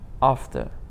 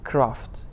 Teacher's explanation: ҳарфи a овози a-ро медиҳад, яъне a-и каме дарозро медиҳад